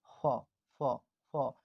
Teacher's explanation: दोनों होंठ को मिलने से इस फ का उच्चारण किया जाता है, और इसको मतलब जो दांत है ना, होंठ से टच होगा